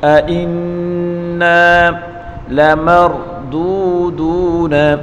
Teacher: میم کو را کے ساتھ ملا کر پڑھیں گے اور را کو پر پڑھیں گے